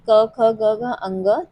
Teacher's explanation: तो अगर हम सबसे पहले क वर्ग की बात करें तो वो कंठ से उच्चारित होता है